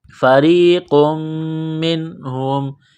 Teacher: نقطہ والا قاف ہے بڑا قاف اس کو موٹا کرنا ہے را کو یا کے ساتھ ملانا ہے را کو باریک کرنا ہے